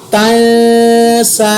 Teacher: تا زبر نون تن، سین کھڑی زبر سا، تن سا، یہاں پر میں نے نون پر اخفا کیا، سین کو بھی میں نے ایک الف کے برابر لمبا کیا